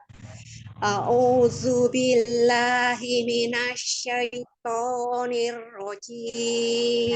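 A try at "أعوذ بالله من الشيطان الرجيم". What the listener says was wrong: Ya, ta'awudnya itu bukan huruf zai, jadi bukan a'udzu tapi a'udzu. Ujung lidahnya antara ada di ujung gigi seri bagian atas. Zu, a'udzu. Itu masih belum dapat nih tautnya ya, tidak zu ya, belajar zazi zu, a'udzu zu, zazi zu ya. Zalnya ya belum dapat ya.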